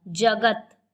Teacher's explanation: जगत में ज और त की तुलना में ग पर अधिक बल दिया जा रहा है। जगत, ग ही पूर्ण कर रहा है, जगत में ग पर अधिक बल दिया जा रहा है। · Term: बालाघात